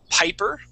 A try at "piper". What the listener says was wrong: You had used a B sound saying biper.